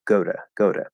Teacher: the voice from the O is affecting that really weak T in to, that especially weak T, and it actually becomes a flat D very commonly. It doesn't have to, but it very commonly does.